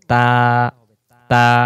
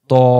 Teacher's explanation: উচ্চারণের পার্থক্য যেমন হলো তা অক্ষর বলার সময় পাতলা আওয়াজে পড়তে হবে এবং ত অক্ষর বলার সময় মোটা আওয়াজে পড়তে হবে। এবং পাতলা আওয়াজ কি, মুখটা চেওড়া হবে তা তা। আর মোটা আওয়াজ কি, মুখটা গোল হয় ত। যে অক্ষরটা বলার সময় বাংলাতে আকার হয় না, যেমন বাংলাতে যদি তা অক্ষর বানান করি ত আকার তা, তাহলে তা হয়।